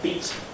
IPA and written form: biːt (beat)